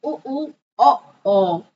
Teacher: वृत्ताकार यानी होठ गोल हो जाते हैं